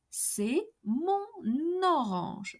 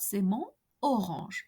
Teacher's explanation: the sound of the last letter of the word mon, N, is transferred to the second word orange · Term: N liaison